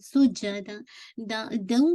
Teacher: تنوین کے بعد واو آ رہا ہے، ادغام ہے، ادغام ہے غنہ، لیکن میک شور ادغام کامل نہیں کیونکہ آپ کو اسٹل غنہ کی آواز آ رہی ہے. رائٹ، آپ کو اس تک تنوین کی آواز آ رہی ہے، تو میک شور کیجیے گا کہ آپ کا ناقص غنہ ہے، ناقص ادغام ہے، لیکن یہ کہ وتھ موسٹ کمپلیٹ غنہ، اکمل غنہ کے ساتھ.